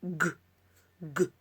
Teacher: If you place your hand on your throat, you realize sound g is voiced.